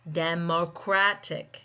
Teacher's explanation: We see that the second last syllable is taking the stress and we see that little marking on our phonetic notation as well.